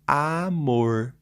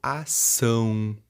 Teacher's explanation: o som tá tentando sair pelo nariz · É aquela vogal em que o som dela não sai pela boca, e sim pelo nariz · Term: nasalização, vogal nasal